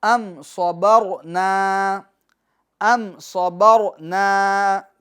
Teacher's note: इसमें ध्यान ये रखना है कि अम, इसके मीम के सुकून में जुम्बिश न हो, कामिल तौर पर मीम का सुकून अदा हो, जमाओं के साथ, ठहराव के साथ। अम, अम यानी ये जो आवाज़ लौट कर आती है ना, अम सबर, अम ये आवाज़ लौट कर नहीं आनी चाहिए, बल्कि अम सबरना, अम सबरना।